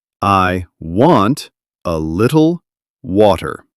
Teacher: Stress on want, little, water. Soft on I,